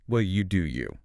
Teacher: Specifically, it was so flat, like the air went out of a tire. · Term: the dismissive version